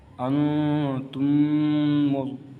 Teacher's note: یہاں پر ادغام شفوی ہوگا کیونکہ میم ساکن کے بعد میم آ رہے ہیں، تو اس لیے یہاں پر ادغام شفوی ہوگا، یعنی ہم گنہ کریں گے